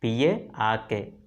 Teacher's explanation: In the word, the sound R is not pronounced.